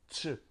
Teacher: En français, on dirait ch, mais en espagnol, on prononce comme s'il y avait un T devant.